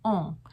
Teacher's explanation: It's called a French nasal in vocal speak. It's a sound that's made in the French language, not so much in the English language, and it's a very nasal sound. That's why it's called a French nasal.